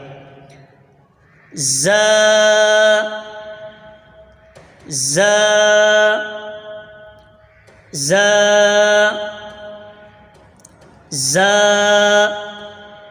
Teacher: जबान की नोक और दोनों दांतों के अंदरूनी किनारे से अदा होता है जा